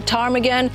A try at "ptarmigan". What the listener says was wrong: The P in English is silent, so it's just ptarmigan.